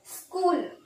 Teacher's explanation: ಸ್ಕೂಲ್ ಇಲ್ಲಿ ಓದುವಾಗ ಬರೀ ಅರ್ಧ ಸ ಬರುತ್ತೆ, ಪೂರ್ತಿ ಸ ಬರಲ್ಲ.